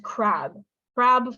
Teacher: I have to make sure if I say the word crab it has to be really really long